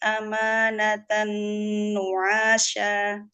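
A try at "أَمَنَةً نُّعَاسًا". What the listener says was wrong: Ayo, kenapa kenapa panjang? Amanatan nu'asa, sin bukan shin.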